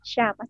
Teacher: ketika mengucapkan Shin itu lidah kita terangkat Tapi nggak sampai menempel ke langit-langit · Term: huruf syin